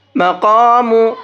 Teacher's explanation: مقام، بڑا قاف ہے، اس کو موٹا کر کے پڑھیں گے